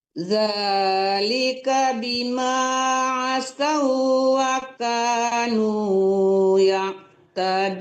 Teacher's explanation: Asaw itu tidak boleh tertahan lama, sekedar tasdid, penekanan tasdid juga ya. Jangan asawaka, nggak boleh juga kayak gitu ya.